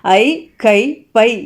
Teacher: ஐ, கை, பை என ஐகார எழுத்து வந்து தனித்து வரும் இடங்களில் தனக்குரிய 2 மாத்திரை அளவில் வந்து முழுமையாக ஒலிக்கிறது. ஸோ ஐ அப்படிங்கிறது ஒரு நெடில் எழுத்து.